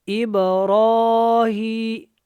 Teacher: با جو ہے قلقلہ والی ہے کیونکہ با ساکن ہے، اور جب با ساکن ہو تو یہاں پہ قلقلہ ہوتا ہے۔ کیسے کرتے ہیں؟ آواز کو دوبارہ پیدا کرتے ہیں